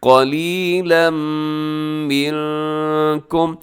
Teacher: قلیلاً پہ تنوین کے بعد میم حرف یرملون کا ادغام کیجیے گا غنے کے ساتھ